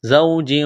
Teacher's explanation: واو لین ہے بغیر کھینچ کے پڑھیں گے، تنوین کے بعد واو ہے، ادغام کریں گے، غنہ کریں گے۔